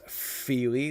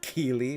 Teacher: this is feely, which is a fricative, and this is keely, which is a plosive.